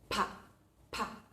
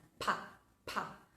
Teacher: Nosotros retenemos el aire con fuerza y luego cuando abrimos los labios sale bruscamente pa. Para saber si lo estamos haciendo bien, lo que tenemos que hacer es poner o nuestra mano o bien un pedazo de papel adelante de nuestra boca. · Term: sonido bilabial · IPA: /p/